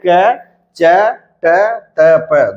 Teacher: अल्प प्राण है और अघोष है